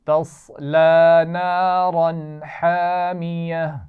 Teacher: را کو موٹا پڑھیں گے اور تنوین کے بعد ہا ہے تو غنہ نہیں کریں گے